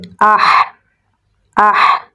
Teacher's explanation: حمزہ کو ہا کے ساتھ ملائیں گے، ہا کو گلے کے درمیان والے حصے سے نکالیں گے